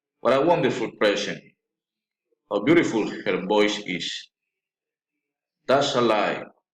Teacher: Exclamatory sentences, falling intonation.